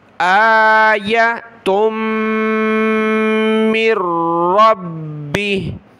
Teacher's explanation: یہاں تا کو میم کے ساتھ ملا کر ناک میں آواز پیدا کرنی ہے۔